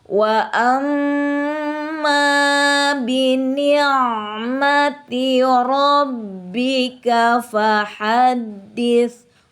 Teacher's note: Ro-nya ro tafhim, ditebalkan huruf ro-nya. Fahaddits. Nah, di sini ada sifat huruf hamz, dialirli ya, bunyi huruf fa-nya.